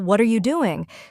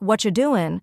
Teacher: what are you doing sounds more like what you doing when spoken quickly